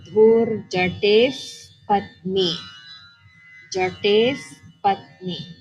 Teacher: because it's followed by the pa in patni, it's pronounced as a fa sound